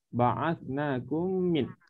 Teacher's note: Idgham mislaini ni adalah menggabungkan mim sukun ke dalam mim berbaris berserta dengung. Hurufnya satu sahaja.